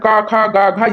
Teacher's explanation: घ का उच्चारण स्थान क ख ग घ यानी कंठ है